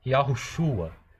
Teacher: Se você pronuncia devagar, você nota essa vogal O aqui. Mas se você pronuncia de forma rápida, Yahushua, perceba que você quase não ouve esse O. A vogal que se destaca é esse A, ok?